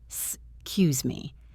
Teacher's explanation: The pronunciation usually drops the first e slightly.